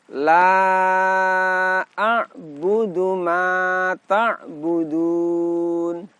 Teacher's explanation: La juga kita baca panjang selama 2 alif atau 4 harokat. Ini juga termasuk mad jaiz munfasil.